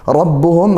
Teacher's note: kami untuk langsung saja merapatkan sesuai makhrajnya huruf mim seperti itu dan ba juga dari bibir kedua bibir makhrajnya · ra-nya fathah ya, kita baca tafkhim tebal.